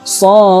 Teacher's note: Maka ketika dibaca ada pantulannya, ada qalqalahnya